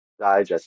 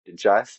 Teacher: digest as a verb in English is stressed on the second syllable, while as a noun it is stressed on the first syllable